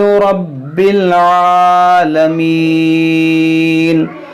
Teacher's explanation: یہاں پر دیکھیں را پر زبر ہے تو اس کو موٹا پڑھیں گے، با کو خوب جماؤ کے ساتھ پڑھیں گے